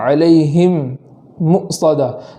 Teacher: تو علیہم کے آخر میں جو میم ہے وہاں ادغام ہو رہا ہے. تو ادغام ہونے کی وجہ سے اس میم کے اندر بھی ایک الف کے برابر گناہ کی تاخیر کریں گے